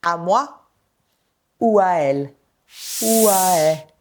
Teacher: les voyelles se succèdent les unes après les autres sans coupure. Par exemple, dans la phrase « à moi » ou « à elle » ou « à elle », on a 3 voyelles qui se succèdent. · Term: l'enchaînement vocalique